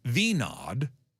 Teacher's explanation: the first name is said with a long E sound followed by a soft nod